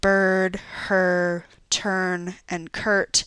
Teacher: the vowel and the R occur inside the syllable together and tend to blend into one another so that it's difficult to tell when the vowel stops and the R begins.